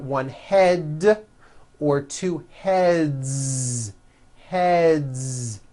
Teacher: the word head ends with a voiced D, d, d. So we've got one head or two heads.